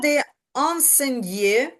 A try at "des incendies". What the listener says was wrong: Il y a des incendies. Ні, не die, а ді. Ді.